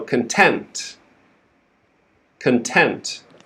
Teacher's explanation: we're stressing the second syllable